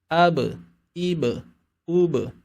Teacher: Huruf ba, bunyinya mungkin terdengar mirip dengan huruf B, tapi tidak memiliki sifat qalqalah. Maka ketika kita membaca huruf ba, terutama dalam kondisi sukun, maka harus terdengar bunyi qalqalah.